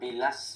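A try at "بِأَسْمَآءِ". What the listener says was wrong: এটা এটা এটা আলিফ, আলিফ লাম না এটা। এটা লাম না, আলিফ। যদি লাম হতো, শোনো, যদি লাম হতো তাহলে এই আলিফটা এইভাবে সিনের সঙ্গে মিলে থাকতো, অ্যাডজাস্ট হয়ে যেত।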